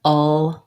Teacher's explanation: the back of my tongue stays down and the front lifts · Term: dark l